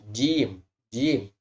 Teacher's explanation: Jim bisa kita rasakan ketika dia sudah benar tidak ada napas yang berhembus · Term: huruf Jim, huruf jim